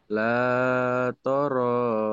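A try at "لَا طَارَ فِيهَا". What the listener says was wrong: Kok toro? Emang ada toro? Emang ini bunyi toro? Kok la toro? La-nya panjang, matobi'i. La-nya panjang, matobi'i. I-nya panjang, matobi'i.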